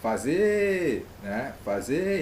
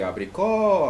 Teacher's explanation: seria oxítona porque a última sílaba é a mais forte